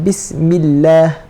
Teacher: Ada huruf berbaris kasrah. Bila berbaris kasrah, maka kita kena nipiskan kalimah Allah.